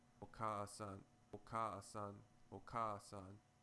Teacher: you will find that the second vowel easily merges with the first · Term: long vowel sound